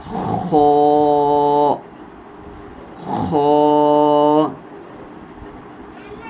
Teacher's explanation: یہ حرف مستعلیہ ہے، موٹا کر کے پڑھیں گے